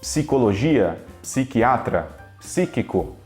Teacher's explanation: no português a gente pronuncia esse P do PSI